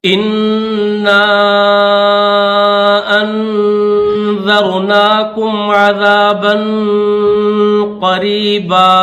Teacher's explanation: نون مشدد ہے، اس کے اوپر غنہ کریں گے ، اس کے بعد الف کے اوپر مد منفصل ہے، چھوٹی · الف کے اوپر مد منفصل ہے، چھوٹی مد ہے تو اس کو 3 سیکنڈ کھینچیں گے